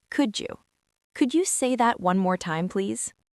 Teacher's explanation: When native speakers say could you, we usually blend the duh and the u together. It sounds almost like a J sound. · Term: linking your words